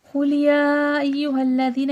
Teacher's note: یا پہ دیکھیں کھڑا زبر بھی ہے، مد بھی ہے، 5 سے 6 الف کی مقدار کے برابر کھینچ کے پڑھا جائے گا. ایھا الذین، زال نرمی کے ساتھ اور دی میں یا مدہ یا ساکن سے پہلے زیر ہے.